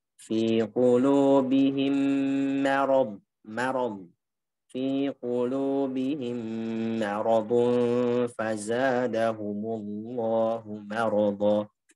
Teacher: yang keliru adalah ketika mimnya ngikut tebal juga. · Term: istifal